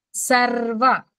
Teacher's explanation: సర్వ ర్ అని పట్టుకొని ఒకసారి కొద్దిగా బిగి ఆపి వదులుతాము